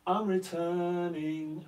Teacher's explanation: we always in the English language stress the second syllable of the word returning